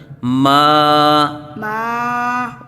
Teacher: ناک سے آواز نہیں نکالنی، منہ سے آواز نکالنی ہے